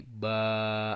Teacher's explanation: Jadi tanwin satunya hilang. Jadi bukan ban tapi ba.